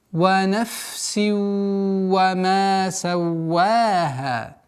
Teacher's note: Вот фа и син. Фа – фрикативный звук, син – свистящий. И поэтому при таких свойствах, при встрече двух звуков с такими свойствами, нужно максимально быть внимательным, чтобы не аннулировать одну в пользу другого.